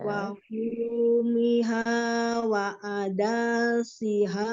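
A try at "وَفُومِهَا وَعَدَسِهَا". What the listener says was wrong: Nah, danya salah, danya.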